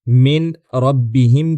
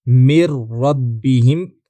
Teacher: जहां हम मीन रब्बीह की बजाय मिर रब्बीह कहेंगे। यानी नून और रा का इदगाम कर देंगे।